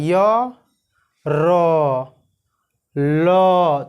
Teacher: अंत अस्थ व्यंजन, जिन व्यंजन वर्णों का उच्चारण स्थान, जिन व्यंजनों का उच्चारण जीभ, तालु, दांत तथा ओष्ठ के परस्पर स्पर्श से होता है किंतु पूर्ण स्पर्श नहीं होता है। मतलब जिन व्यंजन वर्णों का उच्चारण जीभ, तालु, दांत तथा ओष्ठ के परस्पर उच्चारण से होता है, परस्पर स्पर्श से होता है परंतु पूर्ण स्पर्श नहीं होता है, उसे हम क्या कहते हैं, अंत अस्थ व्यंजन कहते हैं।